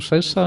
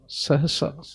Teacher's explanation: ਸਹਸਾ ਹਹ ਪੂਰਾ ਇਹਨੂੰ ਸਹਿਸਾ ਨਹੀਂ ਕਹਿਣਾ